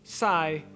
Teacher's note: in vietnamese the letter s represents a retracted s sound